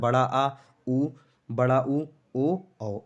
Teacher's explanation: पश्च स्वर वो होते हैं दोस्तों जिसमें जीभ का पश्च भाग काम करता है